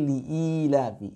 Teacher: I-nya yang panjang, hamzahnya yang panjang, bukan lamnya